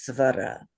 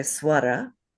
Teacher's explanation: I was taught with a V sound instead of a w sound